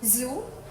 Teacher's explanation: similar to S but with vocal chord vibration